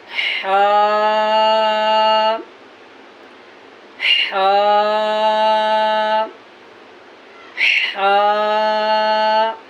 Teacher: इसका मखरज है वस्ते हलक यानी हलक का दरमियानी हिस्सा।